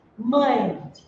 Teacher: na hora que você vai pronunciar parte do som sai pelas narinas e parte pela boca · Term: ditongos nasais